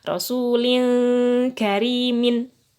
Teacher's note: Ketika mengucapkan tanwin rasulin, maka mulut kita langsung membentuk huruf kaf. Kaf itu mangap, berarti langsung mangap. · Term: ikhfa hakiki